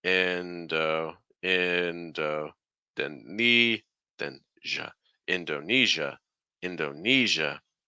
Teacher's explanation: the stress is on the E so the first two syllables are going to go down